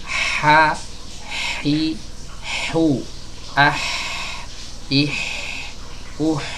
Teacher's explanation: H keluar ya dari tenggorokan bagian tengah. Ya, hati-hati di sini banyak orang yang membaca huruf H ini ya keluar dari tenggorokan bawah. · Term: tenggorokan tengah